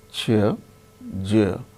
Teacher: So, air comes out slowly. And in these two also, ch is voiceless, j is voiced.